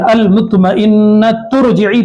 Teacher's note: रा को मोटा पढ़ेंगे इसलिए कि रा साकिना से पहले पेश है।